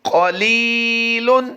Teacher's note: لی کو ہم لمبا کر رہے ہیں، قاف کو پر کر رہے ہیں۔ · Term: یا مدہ